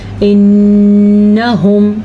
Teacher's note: پھر سے نون کے اوپر شاد آ گئی تو ہم نے نون پہ غنہ کرنا ہے